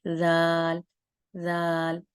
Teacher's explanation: इस राल को बहुत नरमी से पढ़ा जाता है और इसका मखरज भी सेम वही है कि जब हमारी जुबान ऊपर के दांतों के किनारों से लगती है और थोड़ी सी जुबान बाहर की तरफ आती है तो राल अदा होता है